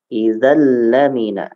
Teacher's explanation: Ya, dari zal ada tanwin, zal bertemu dengan lam, jangan ditahan. Idzal lamina, langsung.